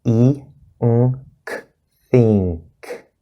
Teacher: Then we have the back N plus a K.